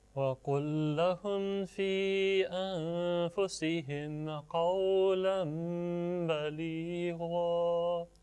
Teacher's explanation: This tanween will change into meme sakin, and this changing will take place with 2 counts of nasal sound.